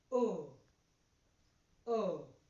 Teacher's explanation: the back of the tongue is raised towards the roof of the mouth. The lips are round and it is a short vowel sound. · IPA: /ʊ/